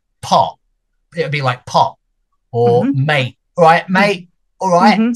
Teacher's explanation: that T becomes a glottal stop where you're stopping the air here in the glottis. So it's still a T.